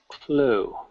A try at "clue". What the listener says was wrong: Like, the way you first said it was more like clo. But look at my lips.